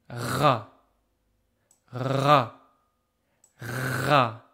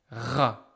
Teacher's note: there's a big vibration of the tongue at the back of the mouth like this. Par exemple, ra, ra, ra.